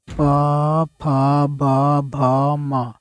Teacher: आप बोल कर देखो, पूरा ओठ से ही ये ध्वनि आ रही है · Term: ओष्ठ